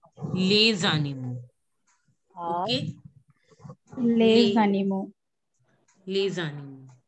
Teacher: animo starts with a vowel A. So you have to just link the word and it will become lezanimu.